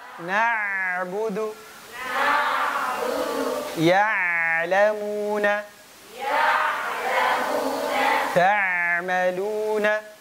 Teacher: huruf ain pastikan tengah tenggorokan, nggak masuk ke hidung. Karena biasanya di antara kekeluaran ain itu masuk ke hidung.